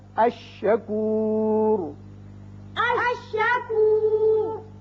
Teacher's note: جو حرف شمسی ہے وہ تشدید کے ساتھ پڑھا جاتا ہے اور لام نہیں پڑھا جاتا, یعنی ادغام ہوتا ہے.